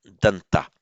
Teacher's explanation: in Pali, as usual, the vowel is shortened, followed by a consonant cluster